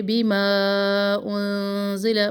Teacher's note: مد منفصل، 2 الف برابر اس کو لمبا کرے. انزل، اخفا نون پر، اور لام کا جو زبر ہے اس کو بھی لمبا نہ کرے.